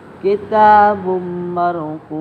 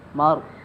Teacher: huruf ra takhim, dibaca tebal